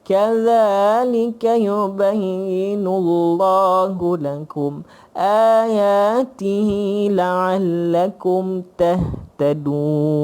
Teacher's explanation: tak ada apa dengung apa pun tak ada. Mat pun pendek-pendek.